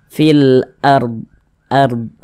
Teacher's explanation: huruf rnya dibaca tebal dibaca tafkhim sehingganya pangkal lisan kita itu naik terangkat ke atas ketika Kita mengucapkannya fil ARD ARD nah begitu ditebalkan huruf rnya kemudian ini kita · Huruf ra sukun sebelumnya tanda baca fathah, maka huruf ra sukunnya dibaca tebal, dibaca tafkhim.